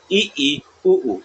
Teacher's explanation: संवर्त मतलब क्या होता है, इसमें मुंह कम खुलता है, मुंह कम खुलता है।